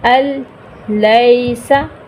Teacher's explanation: اب اس کی مثال دیکھیے، نون ساکن کے بعد دیکھیں، یہ نون ساکن، اس کے بعد لام آ رہا ہے، ٹھیک ہے، الیسا، نون کو ہم درمیان میں ڈراپ کر رہے ہیں، الیسا، غنہ نہیں کر رہے لیکن ادغام ہو رہا